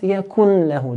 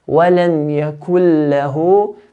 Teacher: Do not pronounce the nun, but completely take it out.